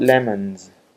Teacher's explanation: forward to the S how about lemons Z yes Z why because n is voiced it gives its characteristics of voicing to the plural